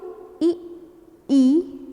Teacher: तालु जो कि कंठ से थोड़ा ऊपर है, वहाँ से ई का उच्चारण करते हैं तो वह तालव्य कहलाते हैं।